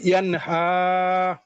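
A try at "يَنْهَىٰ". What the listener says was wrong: হাঁটা মনে হয় একটু চাপ হয়েছে, আর একটু বাতাস বের হবে, হাই আওয়াজ।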